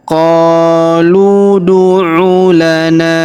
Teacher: Kemudian huruf na kita panjangkan dua harakat karena terdapat alif di depannya.